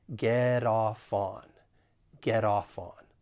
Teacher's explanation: the final T in get, once again, I'm from the US, so I will pronounce it as a flap T.